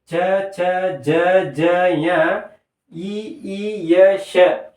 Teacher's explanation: ನಮ್ಮ ನಮ್ಮ ಬಾಯಿಯಲ್ಲಿ ಇರತಕ್ಕಂತಹ ಮೇಲ್ಗಡೆ ಅಂಗಳ ಅಂತ ಏನು ಕರೀತೀವಿ ಅಲ್ವಾ ನಾವು ಆ ಅಂಗಳದ ಮುಂಭಾಗದಲ್ಲಿ ನಾಲಿಗೆ ಬಂದು ಟಚ್ ಆಗಿ ಇವುಗಳು ಉತ್ಪತ್ತಿಯಾಗುತ್ತವೆ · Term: ತಾಲವ್ಯ